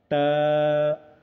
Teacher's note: ता का मखरज ज़ुबान की नोक को ऊपर के दांत के किनारे हैं